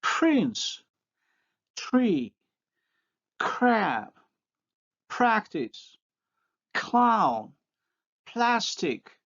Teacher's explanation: While the voiceless liquids have an exclusively unique context, they occur only after voiceless stops.